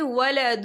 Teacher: قالت رب انا یکون لی ولد ولم یمسسنی بشر، یہ دیکھیے ولد، دال کے پر تنوین ہے، تنوین کے بعد جو ہے واو آ رہا ہے، اور واو جو ہے حروف یرملون میں سے ہے تو یہاں پر ادغام ہوگا، تھوڑا سا غنے کے ساتھ پڑھیں گے